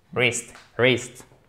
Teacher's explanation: vous ne prononcez pas le W, et ici, vous avez un I court